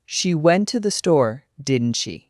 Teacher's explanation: The tag falls off in pitch inviting the other person to nod along.